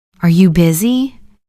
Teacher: Your voice goes up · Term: rising intonation